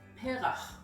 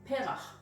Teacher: It is not perach, it is perach, emphasizing the second from last syllable